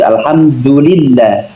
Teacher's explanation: Du-nya mencucu lah ya. Kan domah ya. Maka harus mencucu.